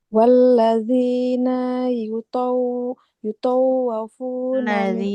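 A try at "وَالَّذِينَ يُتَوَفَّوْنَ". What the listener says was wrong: Ladzina. Nunnya nggak boleh panjang. Yang ditasydidkan itu bukan wawunya, tapi fa-nya.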